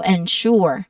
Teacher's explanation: So the stress is on the second syllable, sure.